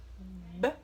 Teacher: b se chama b e o seu som é b b, o som da letra b é produzido através do contato do lábio superior com o lábio inferior